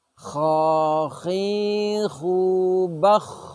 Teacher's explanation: ketika diucapkan nafas dan suaranya mengalir nafas mengalir itu namanya hanes suara mengalir atau keluar dengan lembut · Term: rukhwah